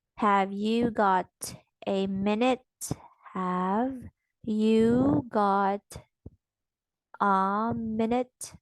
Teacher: yes no questions with a two three intonation pattern · we are using number 2 pitch, which is middle. So this is middle, middle, middle, middle, and then for minute, that's already number 3, high, high, high.